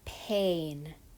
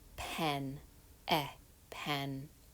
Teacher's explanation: This is a lax vowel. It's more relaxed. Your face is not tense. The sound is a little bit shorter.